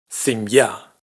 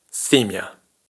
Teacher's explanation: en simya el acento cae en la última sílaba, mientras que en simia el acento cae en la primera sílaba, para el tema que estamos viendo hoy, la diferencia es que en simya pronunciamos mi ya, mientras que en simia pronunciamos mia.